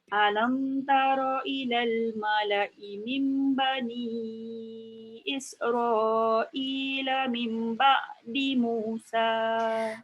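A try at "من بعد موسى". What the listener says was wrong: Mim tu dengungkan. Mim ba'di Musa. Ambil sikit kat situ.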